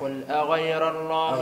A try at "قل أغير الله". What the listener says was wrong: غير الله فخر الراء.